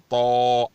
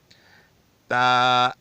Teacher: تا کی ادائیگی بھی پتلی ہے، اس کو موٹا نہیں پڑھا جائے گا